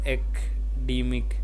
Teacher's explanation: It is not a CA academic but academic. The stress is on the third syllable D. The A in the first syllable is pronounced like the A in cat, and the CA is the second syllable sound like the A in China.